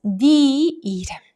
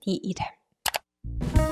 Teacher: they usually pronounce 내 as 네 in real life, in spoken form